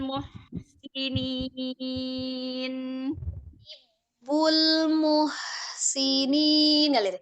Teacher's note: makhraj h itu kan dari tenggorokan bagian tengahnya lembut saja mengalirnya